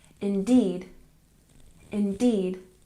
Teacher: indeed, we stress the second syllable